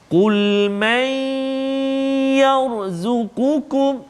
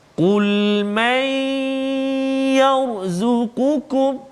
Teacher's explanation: Yang ni kita tengok contoh nun mati pula bertemu dengan ya. Maka kita masukkan bunyi nun ke dalam ya dengan dengung 2 harakat. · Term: idgham ma'al ghunnah